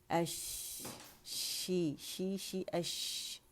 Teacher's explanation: شاہ کے لیے زبان کا درمیانی حصہ، کیونکہ مخرج شین کا کہاں ہے، ہماری زبان کا درمیانی حصہ اوپر اٹھتا ہے اور تالو کے قریب ہو جاتا ہے، اور تھوڑا سا سپیس ہوتا ہے تالو اور زبان کے درمیانی حصے کے درمیان، تاکہ جو ہوا پیچھے سے آ رہی ہے وہ پھیلے اور شاورنگ ساؤنڈ شین کی تفشی پیدا کرے.